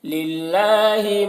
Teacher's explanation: اللہ کلام کو باریک پڑھیں گے کیونکہ اللہ کلام سے پہلے زیر ہے۔